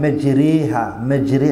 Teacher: pronouncing the A as midway between an A and an E. So, yeah, so the person says, he doesn't say A and he doesn't say E. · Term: Imala